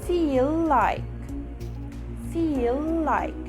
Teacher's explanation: the first word ends with l sound and the next word starts with the same l sound so all you need to do is connect the both else together